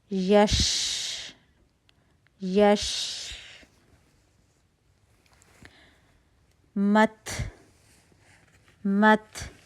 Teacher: حروف کا اور جو تا ہیں ان کی ادائیگی میں ہمیں مبالغہ آرائی سے بچنا ہے کہ کہیں ان کی آواز جو ہے پھر وہ کھ اور تھ والی نہ بن جائے. ٹھیک ہے, ان کے اندر ہا نہیں ہم نے آنے دینا, تو صرف ہوا ہی, نیچرل ہوا جو ہے وہی محسوس ہوگی, آپ نے اس کو ہا نہیں بنا دینا. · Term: ہمس